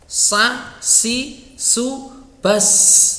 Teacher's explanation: Hamas, keluar nafasnya atau udaranya mengalir, dan dia punya sifat sofir, yaitu ada tambahan suara yang mendesis.